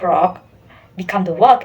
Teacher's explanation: For English, R usually turns into W when it undergoes gliding